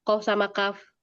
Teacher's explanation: lebih dalam qof. Maka kedengarannya lebih kuat kan? karena dia di belakang. Kalau ak lebih ringan dia lebih maju ke depan dan itu udah tabiat suaranya demikian.